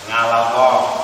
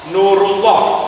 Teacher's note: Kalau sebelumnya lafaz Allah ada fathah dan doma, maka lafaz Allahnya Anda baca dengan tebal.